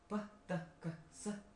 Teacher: when you make a sound p, t, k, s, is there any vibration? No. So it is identified as voiceless sounds.